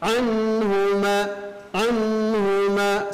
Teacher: Karena huruf nun ini adalah sukun adalah memiliki sifat huruf tawasud, pertengahan antara tertahan dan mengalir. Jadi tidak dibaca anhu, tidak digentakkan, dialirkan sedikit. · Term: izhar